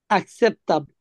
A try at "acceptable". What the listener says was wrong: yes এটা এ না আ